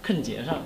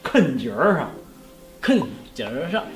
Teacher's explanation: 对，你那个儿化音在第二个字